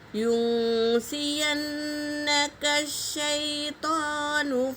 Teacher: یہاں نون پر تشدید ہے میری بہنوں، غنہ کریں گے